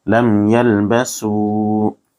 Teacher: ام میں جس حرف پر جزم ہو اس کو پچھلے والے حرف سے ملا کر پڑھتے ہیں، اور میم ساکن کے بعد با اور میم کے علاوہ دوسرا حرف آ رہا ہے اس لیے یہاں اظہار شفوی ہوگا، جلدی ادا کریں گے بغیر گنہ اخفا کے